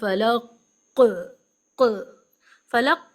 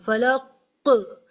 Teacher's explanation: काफ के अंदर एक बाउंस एक इको एक काइंड ऑफ जर्क एक वाइब्रेशन एक डबलिंग साउंड सुनाई देनी चाहिए लौट कर सुनाई देने वाली आवाज जैसे फलक फलक ऐसे पढ़ेंगे